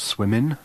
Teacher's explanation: we hear the ing ending pronounced with an alveolar